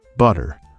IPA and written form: ˈbʌɾər (butter)